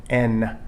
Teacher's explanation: is not combined with a vowel this is the sound n it's pronounced by making an n sound from inside the throat instead of with the nose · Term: true consonant